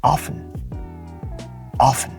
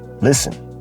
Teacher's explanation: to sound more like a native and to sound more natural there's an absence of the letter T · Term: silent T